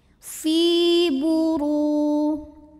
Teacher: Huruf ra dibunyikan secara tafkhim karena ra berbaris dhammah, maka dibacanya tebal. Buru ru matobi'i zahiri karena waw sukun sebelumnya baris dhammah, maka dipanjangkan ro-nya 2 harokat.